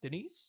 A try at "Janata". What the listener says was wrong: Janita. Janata. Janata. There's no I in there.